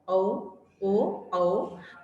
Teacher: ओ और औ में कंठ और होंठ का प्रयोग होता है। औ ओ औ, तो देखो लिप्स गोल गोल घूम जाते हैं, ठीक है।